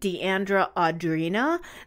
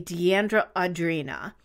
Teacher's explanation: there's definitely a glottal stop between those two vowels and they're completely different sounds